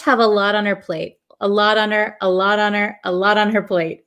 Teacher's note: this T in lot becomes a flap T, so it almost sounds like a D